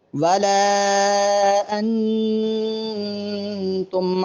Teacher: ولا اور ما پر مد ہے، دونوں مقامات کو لمبا کرنا ہے، اور انتم کے نون پر غنہ کریں گے